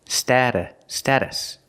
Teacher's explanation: the t is a fast D stata status the second syllable is not stressed so it's pronounced